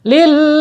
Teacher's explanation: Kamasalil ya, di situ lam, ada lam bertasydid ya. Ketika ada lam huruf hijai yang bertasydid ya, ditekan dan ditahan 2 harokat